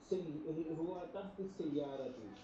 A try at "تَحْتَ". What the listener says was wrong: ہاں تحتا، آپ نے اس کو زبر کے ساتھ پڑھنا ہے، یہ بڑا خاص اسم ہے، تحتا، صحیح ہے نا، ہوا تحت